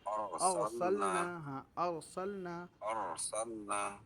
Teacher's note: تھوڑی سی آواز را کی موٹی کر کے پڑھو، منہ کھولو تھوڑا سا۔